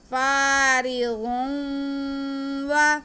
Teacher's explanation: ضاد کو موٹا کر کے پڑھیں گے کیونکہ ضاد حروف مستعلیہ ہے.